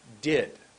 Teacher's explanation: my tongue goes up behind my teeth for did